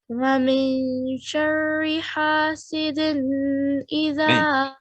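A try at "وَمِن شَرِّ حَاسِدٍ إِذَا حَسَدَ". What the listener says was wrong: نہیں نہیں لمبا کرنا. دن حاسدن اذا حسد دوبارہ.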